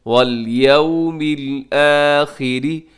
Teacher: آخری میں اگر وقف کریں گے تو آخر میں را ساکن کے ساتھ ہی باریک ہو جائے گی